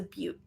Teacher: that has a long u with a stop t